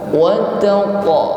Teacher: Huruf qaf yang berharokat sukun maka kita iringi dengan bunyi qalqalah, ada bunyi yang memantul. Wattaqa, namun pantulan huruf qaf di sini tetap tebal, maka bunyinya wattaqa, bukan wattaqa.